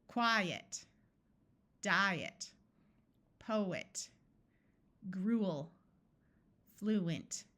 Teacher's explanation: In all of these words, the first syllable is accented, so we try the vowel's long sound first, and the second syllable is not accented, so our E will schwa